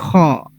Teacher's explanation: حلق کا اوپر والا حصہ، حلق سے اوپر والا حصہ جو ہمارے منہ کی طرف ہے، وہاں سے خا ادا ہوگا